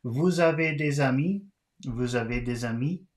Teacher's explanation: Vous avez des amis? And again, this is a question, so we have to raise the voice at the end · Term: question intonation